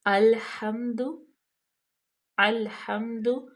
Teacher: اس کو او ہم نہیں کریں گے، لام کو باریک پڑھیں گے